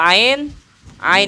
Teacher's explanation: [Musik] jangan Hamzah bunyinya Ain kalau Hamzah yuk yuk kaku yuk Tapi kalau Ain Ain itu dari tengah tenggorokan